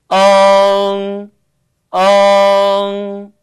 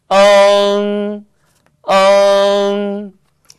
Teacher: 네, 마찬가지가 되겠습니다. 으를 먼저 발음하시고 후, 비음, 응을 발음하시면 되는 거죠.